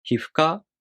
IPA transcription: hifuka